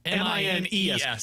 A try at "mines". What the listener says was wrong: no that still sounded like a d at the end